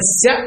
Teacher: అందువల్ల శ అంటే తాలవ్యం దాన్ని శ అనాలి